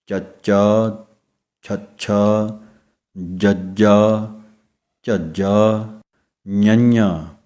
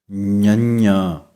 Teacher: ਜੀਭ ਤਾਲੂ ਨਾਲ ਲੱਗੇਗੀ ਅਤੇ ਨੱਕ ਦੇ ਰਾਹੀਂ ਆਵਾਜ਼ ਆਵੇਗੀ